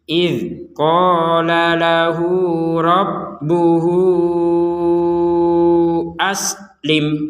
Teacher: dal sukun, sin sukun, mim sukun, sin, mim sukun lagi, maka jangan sampai dipantulkan. Jadi idh qala lahu rabbuhu aslim, betul-betul gak ada pantulan.